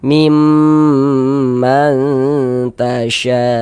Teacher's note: Gunnah musyaddadah. Jadi di bagian mimnya itu suaranya itu kita tahan, kita panjangkan sejenak.